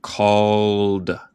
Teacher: en el tiempo pasado, casi nunca vamos a decir el E. Y a veces suena como D, a veces suena como T. En este caso es D.